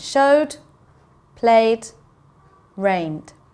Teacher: Okay, so we can hear the d, not so much the e. It just sounds like there's a d sound at the end.